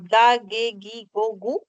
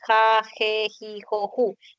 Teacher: En algunos casos, la letra G representa al sonido oclusivo, cuando dices ga, ge, gi, go, gu, y en otros casos representa la fricativa, cuando dices ja, je, ji, jo, ju.